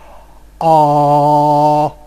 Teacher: my tongue is back and low in the mouth